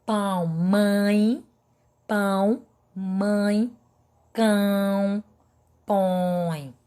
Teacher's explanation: observe que o som das vogais sai pelo nariz